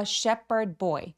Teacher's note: 양측이 소년이죠. 셰퍼 할 때이 ph는 원래는 phone처럼 f 발음을 하는데요. 여기서는 p 발음으로 h 발음이 묵음됩니다.